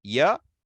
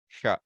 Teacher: Ya is more open. Sha is more closed.